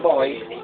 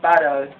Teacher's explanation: One of which is the bilabial consonants, wherein the sound is produced by the upper and lower lips or almost touching one another. The consonants under this are the B as in boy, M as in map, P as in paddle, W as in want, and HW as in where.